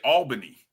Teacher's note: you putting the emphasis on the first syllable when you say it